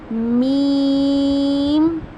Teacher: मीम को हम अदा करते हैं दोनों होंठों के खुश्क हिस्से से, ठीक है। जो बा था उसको हमने अदा किया था होंठों के तर हिस्से से, इसको अदा करेंगे होंठों के खुश्क हिस्से से।